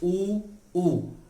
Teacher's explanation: होठों का प्रयोग हो रहा है, हमारे ओष्ठ जो है वो वक्र हो रहे हैं, टेढ़े हो रहे हैं, उनमें बदलाव आ रहा है।